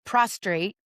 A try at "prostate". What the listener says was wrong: You did say prostrate. You lay prostrate at the foot of pronunciation of prostate. She gives herself onto the R.